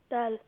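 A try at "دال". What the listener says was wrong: Not dal. Dal, dal. Slightly long. One alif.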